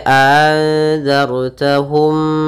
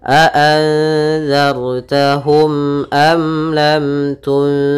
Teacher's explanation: Nah, di sini 3 mim mati bertemu seluruh huruf hijaiyah kecuali mim dan ba, maka kita namakan izhar syafawi. Maka suara mimnya tidak boleh ditahan, tidak boleh anzartahum enggak, tapi dia langsung saja a'anzartahum am lam tunzirhum.